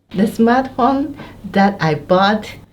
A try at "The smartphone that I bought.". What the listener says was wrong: When you say that I bought, そのイントネーションが上がったんで、I'm like, その続きはなんだ? 皆さん、イントネーションもとても大事なんですよ.